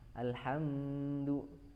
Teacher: Kemudian dia izhar syafawi karena mim sukun bertemu dengan dal. Jadi tidak perlu ditahan atau dipanjangkan gunahnya.